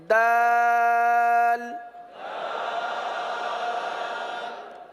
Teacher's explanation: जबान की नोक और ऊपर के दांतों की जड़ से यह हर्फ अदा होता है।